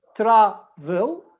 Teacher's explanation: Travel is, we have verb travel, we have 2 syllables. Travel, the stress is on the first syllable, not on the second.